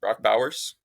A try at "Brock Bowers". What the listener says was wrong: Sounded like you were saying Bach. Bach Bowers. Sound like you're saying Bach.